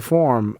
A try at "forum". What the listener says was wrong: no you're saying form but I get what you mean